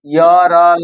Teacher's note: य हो गया आपका तालु से, र हो गया मूर्धा से, ल हो गया दंत से